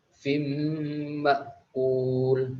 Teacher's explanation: fim tidak dibaca dengung